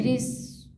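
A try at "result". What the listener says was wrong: इसको स नहीं हुआ, ज पढ़ेंगे। री, ज पढ़ेंगे वहाँ इसको।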